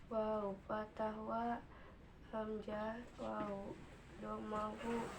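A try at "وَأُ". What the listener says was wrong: U, hamzah waw domah bukan wu ya. Tapi karena nggak ada disukun nya jadi nggak panjang. Kalau disukun menjadi ini makan nggak jadi pendek.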